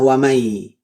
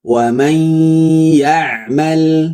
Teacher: Wamay salah wamai tapi wam masuk ke hidung sampai getar hidungnya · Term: idgham bighunah